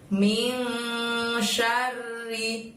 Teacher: Sya-nya pendek, R-nya double. Lalu kemudian bunyi ri-nya juga pendek ya teman-teman, nggak boleh syari tapi syari. · Jadi dibacanya tidak min, tidak n jelas, tapi kita harus membaca samar dan dengung. Jadi bacaan minnya itu kita bunyikan dengan ming seperti itu ya, samar dan dengung.